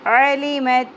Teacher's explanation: single حرکات ہیں، علی نہیں پڑھنا ہے، علی مت، علی مت، عین کو وسط حلق سے نکالنا ہے